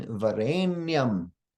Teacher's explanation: the only cerebral sound in this Mantra is the na in Varane